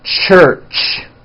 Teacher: it's a combination of the T sound and the sh sound when you put these two sounds together you get a CH it's an unvoiced sound · When you put these two sounds together, you get a ch, ch. It's an unvoiced sound, and you can hear the sound, for example, at the beginning and at the end of the word church. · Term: CH sound